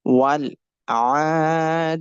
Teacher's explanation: We will connect Waw with Lam and make Ain sound longer because of standing Fatha and Ya sound longer